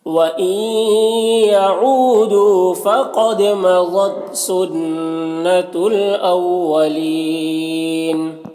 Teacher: یعو میں واو مدہ ہے، دو میں بھی واو مدہ ہے، دونوں کو ایک الف کے برابر کھینچیں گے · واو مدہ ہے، دونوں کو ایک الف کے برابر کھینچیں گے، فقد قوف حروف مستعلیہ میں سے پر پڑھیں گے، دال میں قلقلہ ہوگا ، مضت ضاد حروف مستعلیہ میں سے ہے، پر پڑھیں گے، · سنت نون مشدد غنہ ہوگا · اولین یہاں پر یا مدہ ہے، وقف کی صورت میں مد عارض وقفی ہوگا